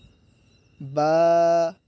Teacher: با میں دونوں ہونٹ ملیں گے